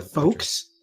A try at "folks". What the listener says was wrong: You don't pronounce the L.